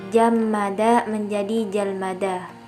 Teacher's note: bunyi yang mempengaruhinya yaitu mim yang kedua dan bunyi yang dipengaruhinya yaitu mim yang pertama, dan bentuk disimilasinya berpindahnya mim yang pertama pada lam untuk membedakan mim yang kedua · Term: disimilasi regresif